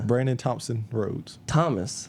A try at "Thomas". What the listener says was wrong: said Thompson again. THOMAS.